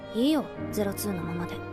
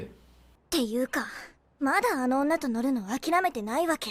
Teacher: I noticed that her intonations aren't as exaggerated as typical anime characters.